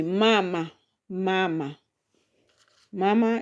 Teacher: So if you count from the end and it has two syllables. So of course the stress is going to land on the first one there.